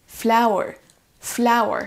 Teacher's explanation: il faudra accentuer sur la première syllabe